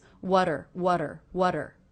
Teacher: the T here is now coming between two vowel sounds and I'm making that a flap T sound which sounds like the D between vowels